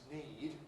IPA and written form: niːd (need)